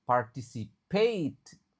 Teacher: Huruf A yang terakhir itu dibaca EI, E sama I. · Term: diphthong